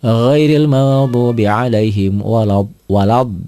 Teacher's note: Mad lazim musaqqal kalimi yaitu mad tabi'i ketemu huruf bertasydid, panjangnya 6 harokat.